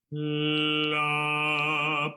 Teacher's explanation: o L ele tem uma produção bem na frente, porque a língua sobe